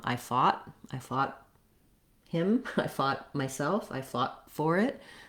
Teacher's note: we're gonna use that stop t most of the time for fought